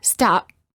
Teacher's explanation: example when they say the letter P in the word stop the lips stay closed no air comes out this creates almost a silent version of the sound P or a half P we know the p is there but